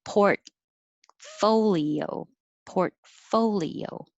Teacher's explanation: I'm not really releasing my T